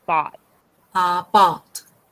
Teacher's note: you said like very closed O. You want to open your mouth more.